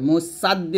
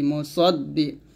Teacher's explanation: হা কফ জবর হা, কফ জের কি, বিল হাক্কি। মুসাদ্দি, এখানে সদ উচ্চারণ করতে হবে, মুসাদ্দি বলা যাবে না, সদ মোটা করে